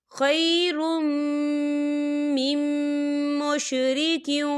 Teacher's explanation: را کے اوپر تنوین ہے اور تنوین کے بعد میم آ رہا ہے، اور میم جو ہے حروف یرملون میں سے ہے، تو یہاں پر ادغام ہوگا اور ہم یہاں غنّہ کریں گے